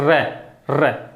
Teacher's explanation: देखो काफी देर तक क्या होता है, कंपन होता है, जीवा बिल्कुल थरथराती है, कांपती है जीवा। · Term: प्रकंपित या लुंठित